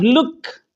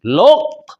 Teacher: قوف کی صفت استعلاء یعنی موٹا ہونا باقی رکھیں گے